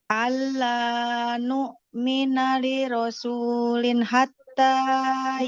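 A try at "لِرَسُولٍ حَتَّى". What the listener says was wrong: Jangan buru-buru. Jangan li rasulin hatta. Kan di dalam tanwin ada bunyi nun sukun ya. Nah, huruf nun kan kalau sukun harus dialirkan dulu suaranya. Allah nu'mina li rasulin hatta.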